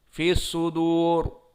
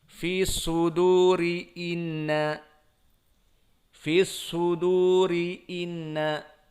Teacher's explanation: Maka jika disukunkan fi sudur, ra-nya mufakhamah. Namun jika disambungkan dengan ayat yang setelahnya, fi suduri inna, fi suduri inna, barulah dia muraqqaqah. Karena asalnya memang kasrah.